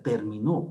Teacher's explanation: la mayor fuerza de voz está en la última sílaba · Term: aguda